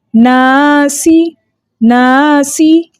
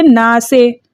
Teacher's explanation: اور پڑھتے ہیں تو ہم کیسے زیر کی ادائیگی کو چیک کرتے ہیں کہ ہماری ٹھیک ہے یا نہیں، کہ ہم یہ دیکھتے ہیں کہ اس کی آواز ای کے ساؤنڈ کے اندر جا رہی ہے تو مطلب ہم نے زیر ٹھیک پڑھا، اور اگر اے کے ساؤنڈ میں جا رہی ہے تو مطلب ہمارا زیر مجہول ہو گیا